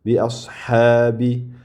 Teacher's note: Bi'ashabi deb ikki harakat cho'ziladi. Ko'p ham cho'zilmaydi. Deb 5 harakat cho'zilmaydi. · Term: mad